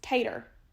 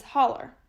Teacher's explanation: of words for example potato becomes tater and holo becomes holler phonetically the lowercase o and epsilon diphthong are replaced with the right hook schwa